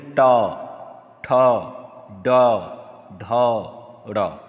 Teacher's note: जीभ ऊपर तालु के और पीछे यानी यू आकार में टर्न कर रही है, उल्टा यू आकार में टर्न कर रही है। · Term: मूर्धन्य वर्ण